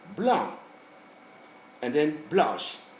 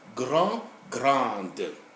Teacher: So, we go from nasal masculine to nasal feminine. Both of them are actually nasal.